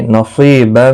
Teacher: نصیبا، صاد مستعلیہ ہے، سی یا مدہ ہے، ایک الف کی مقدار کے برابر کھینچ کر پڑھیں گے